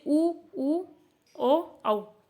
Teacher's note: आप बोलोगे तो आपका मुख का आकार कैसा हो जाएगा? इसमें वृत्त के आकार का हो जाएगा।